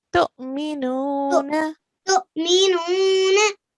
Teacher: You recited well because you just did the alif with a small jerk, which was right.